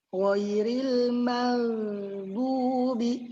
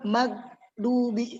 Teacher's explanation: Ketika ghain disukun itu bukan huruf qalqalah, jangan sampai dipantulkan. Dan juga jangan sampai putus, tapi dialirkan suaranya.